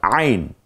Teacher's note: কণ্ঠনালীর মধ্যখান থেকে উচ্চারিত হয় আইন